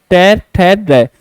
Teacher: ट वर्ग वाले जितने भी हैं इनमें जीभ टच करती है और मुड़ जाती है, ट ठ ड। तो ये मूर्धा कहलाएंगे।